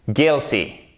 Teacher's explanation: le I court, il se prononce, il est très proche du E accent aigu